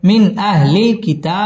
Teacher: মিন ইজহার গুন্না ছাড়া স্পষ্ট করে পড়তে হবে